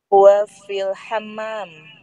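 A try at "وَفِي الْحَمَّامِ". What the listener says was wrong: Nah, dibaca ya ininya ya, akhirnya. Karena ada huruf fi. Wa fil hammami. Jadi sekarang setiap teori yang sudah kita pelajari ya, kita baca dengan memperhatikan akhir dari harokat kalimat tersebut. Tapi ini karena kita sedang belajar ya, mengetahui kedudukannya, maka huwa fil hammami atau fil ghurfati.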